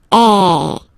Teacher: the sound is really open, and normally your mouth should be opened a little bit more than with the accent aigu